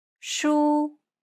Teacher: It's pronounced high and steady, and the pitch should be kept at the highest range that's comfortable for you. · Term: high tone